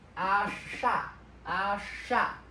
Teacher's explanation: you want to hold the sh sound for a little bit longer. And you might you can but you don't have to have a little gap inside it.